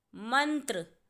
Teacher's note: जो न की आवाज़ आ रही है वो म के बाद आ रही है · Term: अनुस्वार